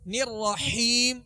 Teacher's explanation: ہا درمیانی حلق سے ادا کریں گے، ہیم نہیں پڑھیں گے بلکہ الرحیم.